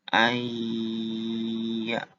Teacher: Jadi baca ai-nya itu dilamain 2 ketukan. Lamanya itu 2 ketukan.